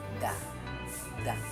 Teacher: ang dulo ng dila ay dumidikit sa loob ng mga ngipin itaas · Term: pangipin